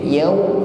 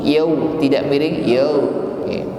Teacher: Kita ucapkan dengan menghimpun bibir, yaw, maka bunyinya benar-benar u, yaw, tidak miring, yaw, ya, maka dihimpun bibirnya, yaw.